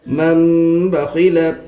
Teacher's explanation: تنوین نون ساکین کے بعد با ہے تو نون کو میم سے بدل کر گنہ اور اخفا کے ساتھ پڑھیں گے، اس کو اقلاب کہتے ہیں۔